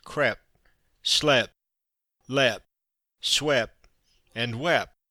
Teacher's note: There is, for example, a disappearance of the final t in such words as crep, slep, lep, swep, and wep.